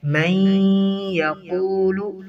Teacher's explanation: ادغام بھی کرنا ہے، ساتھ ملانا بھی ہے اور ساتھ ناک میں آواز غنہ بھی اختیار کرنا ہے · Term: ادغام مع الغنہ